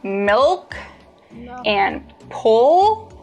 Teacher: when you produce the dark L the back of your tongue bunches